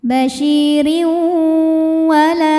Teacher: la mad tabi'i dhahiri karena ada alif didahului fathah, maka lam panjang 2 harokat